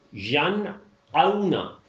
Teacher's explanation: آئین کی آواز نہیں ملانی ہے، حمزہ ہی کی رہے گی